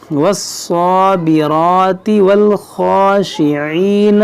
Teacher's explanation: रा को मोटा पढ़ेंगे, स्वाद को खींचेंगे एक अलिफ के बराबर क्योंकि खड़ा ज़बर है